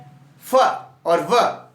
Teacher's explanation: in this sound the lower lip touch the upper front teeth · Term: लेबल डेंटल